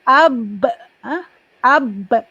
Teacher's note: Ada lantunan sikit kerana sifatnya qalqalah